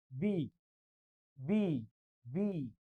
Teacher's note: बी मध्ये दोन्ही ओठ जुळतायत · मी आणखी एक लिहितो बघा, म्हणजे आता एक लिहितो, बी बी बी 2 ओठ जुळतायत. मग दोन्ही ओठ ज्यावेळेस जुळतात उच्चार करताना त्याला बायलेबियल असं म्हणतात.